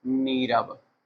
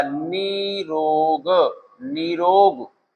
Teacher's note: जो विसर्ग है ये लुप्त हो जाएगा लेकिन इधर जो स्वर ह्रस्व है वो लघु स्वर है वो दीर्घ में परिवर्तित हो जाएगा